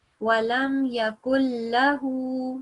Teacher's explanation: we don't make the noon sound and we basically go from the letter before straight to lam mushaddad or ra mushaddad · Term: no noon sound